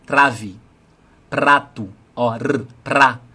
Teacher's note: No R eu tô vibrando a ponta da língua, porque tá antes de vogal. É a primeira opção que eu tenho. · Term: vibrar a ponta da língua